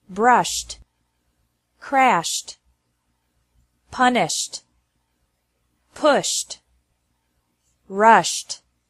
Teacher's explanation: e d is pronounced like T after verbs ending with an sh sound